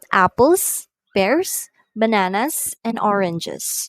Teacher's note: intonation falls on the last item to show that the list is finished. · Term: rise, fall intonation